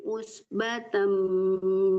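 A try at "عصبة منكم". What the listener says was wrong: Usbatum. Bukan Batam tapi Batum.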